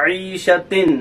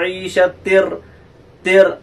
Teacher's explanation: تا دو زیر تن، پھر عیشتن بنے گا، عیشتن، لیکن ہم نے پڑھا عیشتر، تر، نون کی آواز را میں داخل ہو گئی، تنوین کی آواز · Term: ادغام تام